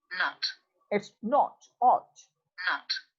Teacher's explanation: the back of the tongue is in fully open position. The lips are rounded, and it's a back open rounded wall.